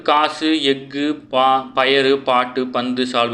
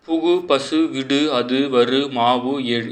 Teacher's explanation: சொல்லின் இறுதியில் வரும்போது ஒரு மாத்திரைக்கு பதிலாக அரை மாத்திரை அளவாக ஒலிக்கும் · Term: குற்றியல் உகரம்